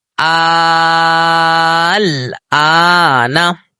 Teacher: آئیے مد لازم کی ہم مثال دیکھتے ہیں جس مد کو 5 سیکنڈ تک ہم نے کھینچنا ہے. حمزہ لام کھڑا زبر آل, حمزہ کھڑا زبر آ, آل آ, نون زبر نا, آل آنا, حرف مد.